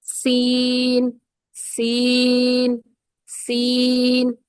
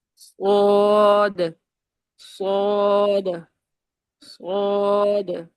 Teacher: اس میں سین میں سیٹی کی آواز ہے اور باریک ہے، اور جو صاد ہے یہ حروف مستعلیہ ہے، موٹا ہے.